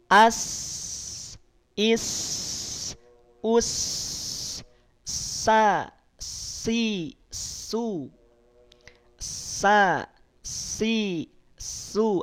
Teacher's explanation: punya sifat rokhawah sekaligus juga punya sifat hams, maka bunyinya akan mengalir, nafasnya akan mengalir.